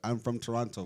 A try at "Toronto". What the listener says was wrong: This guy always pronounces the second T, bro. You always, bro. I hate when you pronounce the second T. This guy, I'm from Toronto. that is how it's spelled. But like no one says it like that.